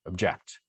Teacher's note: in the second word object the second syllable sounds a little bit louder